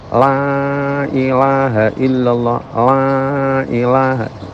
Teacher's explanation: lam itu makhrajnya masih terhitung di tepi lidah, bukan di pojok, walaupun tepi agak ke pojok, ya.